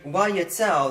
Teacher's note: the vowel has no need to make its own vowel. It just forms a diphthong with a preceding ah.